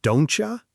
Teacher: T and Y sounds come together and create a ch sound